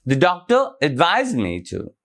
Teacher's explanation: So the stress is on the doctor and the verb is advised.